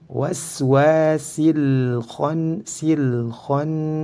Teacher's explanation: Nun dalam keadaan bertasydid disebut dengan nun gunnah musyaddadah, harus dibaca gunnah atau didengungkan, kadarnya adalah 2 harokat.